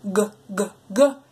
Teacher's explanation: if you put your hands on your throat and you produce the G sound go it will be vibrating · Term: voiced